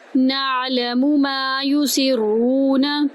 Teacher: نون کو آئین کے اندر داخل کریں گے، نا آئین کی آواز وسط حلق سے ادا کریں گے، میم کو ایک الف کے برابر لمبا کریں گے، ما یسرون، یہاں پر ہم نے سین کو را میں داخل کیا، را کو پر کیا، را کو پر کرتے ہوئے واو میں داخل کر دیا پیش کے ساتھ۔